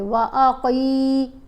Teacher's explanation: काफ को मोटा भी पढ़ना है और थोड़ा सा लंबा करके, व अक़ी, काफ को थोड़ा सा लंबा किया 1 अलिफ जितना।